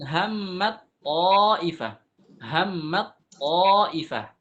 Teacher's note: apa yang terjadi yang awalnya ta itu Tipis kan hammat hammat ketemu dengan th apa yang terjadi kita masukkan ta itu ke dalam th kita sambungkan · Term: idgham